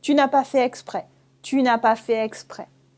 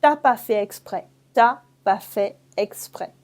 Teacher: You drop the ne and you say t'as pas fait exprès.